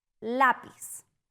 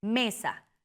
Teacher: Acentuadas en la penúltima sílaba. Se tildan solo si no terminan en N, S o vocal. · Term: Palabras llanas